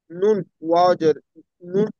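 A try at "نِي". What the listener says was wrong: নুন ইয়াজের ওয়াও নাই। ওয়াও ইয়াজের উই। ইয়া ইয়াজের ই। টানুন।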